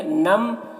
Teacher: نم میں ادغام ناقص ہو رہا ہے، غنہ کے ساتھ میں پڑھیں گے